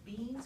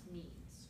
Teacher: i'm going to take that bilabial stop and make it a nasal